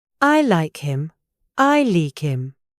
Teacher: It's ut number six, hdropping. In casual British English, we often delete the H at the start of small words like he, him, and her.